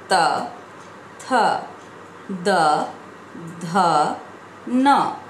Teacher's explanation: जब हम इन व्यंजनों का उच्चारण करते हैं तब वायु दंत का स्पर्श करते हुए बाहर निकलती है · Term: त वर्ग